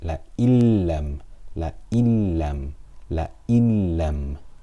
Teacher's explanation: So instead of la in lam, it is la illam, la illam, la illam. We read it as one letter without ghunnah. We completely merge it without ghunnah. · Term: idgham without ghunnah